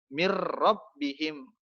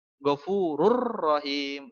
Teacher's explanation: dimasukkan ke dalam huruf lam dan ro tapi tidak didengungkan